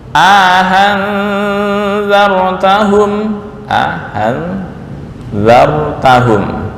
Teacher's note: memasukkan Alif di antara dua hamzah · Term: idkhal